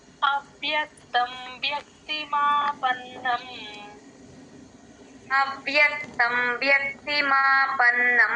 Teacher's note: రావాలి. అలాగే వ్యక్తి వ్యక్తి కూడా అంతే వ కింద యవత్తు వ్యక్తి మాపన్నం వ కింద యవత్తు క కింద త వత్తు రెండు వినిపించాలి